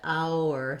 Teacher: i end up with a vowel to vowel linking i don't have to intentionally put a w there